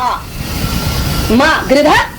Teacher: गृध कास्य गृध ध पुढे विसर्ग आहे तिथं काना नाहीये म्हणजे आकारांत उच्चार न करता पण विसर्गाचा उच्चार व्हायला पाहिजे